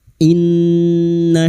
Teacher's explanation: in nun yang bertasdid guna musyaddadah kita denggungkan selama tiga harakat